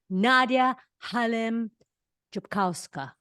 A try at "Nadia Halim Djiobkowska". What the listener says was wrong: It was almost. It's still better than other people whose attempt to try and pronounce the name, but it's Djiobkowska with the V.